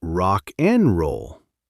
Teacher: The D in and just gives up and goes home. And the K in rock just grabs the N and runs with it.